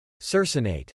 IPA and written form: ˈsɜr səˌneɪt (Circinate)